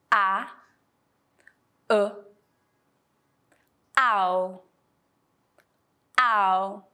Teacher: in order to pronounce it we have to Glide from the first vowel sound to the second one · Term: gliding sound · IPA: /aʊ/